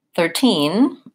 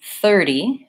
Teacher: 13 I'm gonna stress the second syllable versus 30 I'm gonna stress the first syllable